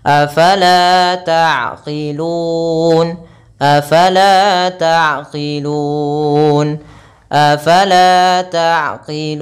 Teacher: melafalkan Fa Jangan dibaca dengan apala apala Enggak dia bukan pa tapi faala taqilun la panjangkan dua harakat kemudian taqilun Ain sifat bainiah yaitu mengalirnya nafas tidak terlalu berlebihan